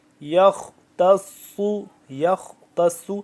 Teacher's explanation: یا خا زبر یخ، خا بھی موٹا، بیچ میں تا باریک ہے